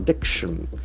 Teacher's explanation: The accent falls on the second syllable, abduction.